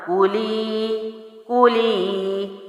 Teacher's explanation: کاف کو جلدی چھوڑا کیونکہ پڑی حرکت اور لی کو میں نے لمبا کر دیا